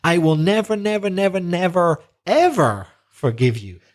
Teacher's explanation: So ever is very stressed to emphasize not only repeating the words, but also with the emphasis on the adverb.